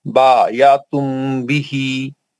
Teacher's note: ہا پر کھڑی زیر ہے تو دو کاؤنٹس کے دو حرکت کے برابر پڑھا جائے گا